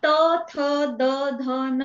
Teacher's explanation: जीभ ही दाताला स्पर्श करत आहे म्हणजे ते दंत्य वर्ण आहेत